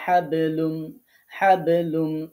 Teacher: একটু কলকলা উচ্চারণ করে যাইতে হবে, ধাক্কা দিয়ে উচ্চারণ করতে হবে বেশি